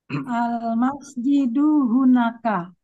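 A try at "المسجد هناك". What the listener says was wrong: Panjang pendeknya Bu ya. Jangan hunaka. Panjang pendeknya dijaga.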